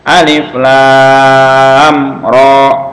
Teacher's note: Nah, jadi ro-nya hanya 2 harokat. Inilah mad lazim mad lazim mukhaffaf harfi.